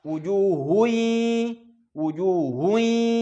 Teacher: Maka cara bacanya 50% hidung, 50% mu mulut.